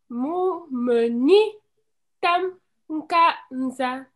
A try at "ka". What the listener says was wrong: Ne mets pas un ka. Si tu dis un ka, c'est comme si tu avais un ici devant. Dis seulement ka.